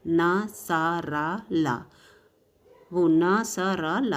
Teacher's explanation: देखिए ऊपर वाले दांतों में आपकी जीभ आगे से टच होगी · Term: वत्स